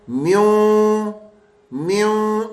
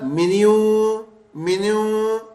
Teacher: دیکھیں نون غننے کی آواز آ رہی ہے، نون کی نہیں آ رہی. اگر میں کہوں نا منیوں منیوں تو پھر نون کی آواز ہے.